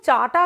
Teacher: ব্যঞ্জন ধ্বনিটা চ এর বদলে ট বসছে